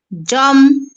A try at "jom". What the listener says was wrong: Si tu dis Jom, ça veut dire que c'est le ton haut. Mais c'est le ton moyen. Jom.